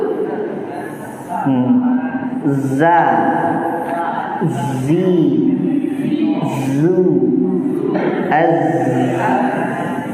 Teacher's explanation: sofirnya lebih nampak ketika zai itu sukun